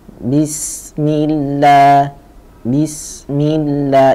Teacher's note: Sinnya agak memanjang bunyinya karena dia itu satu rohwa yang kedua. Jeda rohwa itu jauh lebih panjang ketimbang jedanya tawassut.